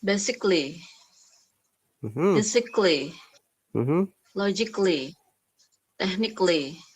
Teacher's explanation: the a in this case we don't have to pronounce a at all so it should be only lly if a what ending a-l-l-y